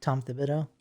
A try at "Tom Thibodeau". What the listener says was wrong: cause you said tom debitto like the way you said it too fast